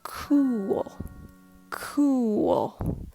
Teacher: do you hear the subtle voice inflection it sounds lower in pitch too